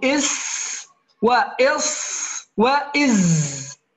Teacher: المخرج التاسع ألا هو طرف اللسان مع ما بين الثنايا العليا والثنايا السفلى